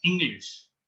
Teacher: Similarly, there are examples like English, where the inherent shwa sound is not present anymore after g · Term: schwa